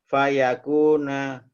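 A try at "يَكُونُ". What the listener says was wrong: Yakunu Pak, bukan yakuna.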